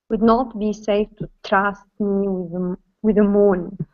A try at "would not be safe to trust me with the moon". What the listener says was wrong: almost less pressure on the tr. You're saying tras instead of tra. Trust.